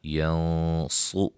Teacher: یہاں نون ساکن کا اخفا، صاد کو موٹا